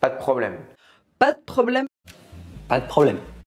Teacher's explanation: But in French of course, that's no problem with an unaspirated /p/.